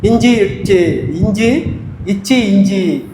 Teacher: அப்ப மூணு கமா இஞ்சி இச்சு இஞ்சு இச்சு இஞ்சி நாவின் இடைப்பகுதி நடு அண்ணத்தின் இடைப்பகுதியை தொடுவதால் இது உருவாகிறது